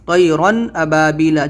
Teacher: جو رن ہے اس کو ہمیں رن ظاہر کر کے طیرن ایسے پڑھنا ہے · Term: اظہار